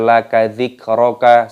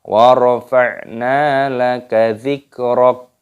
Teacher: Wa rafa'na laka dzik, kafnya sukun dimatikan dzikrak. Kafnya dimatikan ketika tanda berhenti waqaf. Jangan dibaca laka dzikraka, salah.